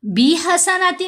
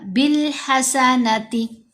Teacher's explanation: جب الف اور لام آئے تو لام کی آواز کو ہم نے پڑھا بی حسناتی نہیں پڑھا، بالحسناتی۔ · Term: حروف قمری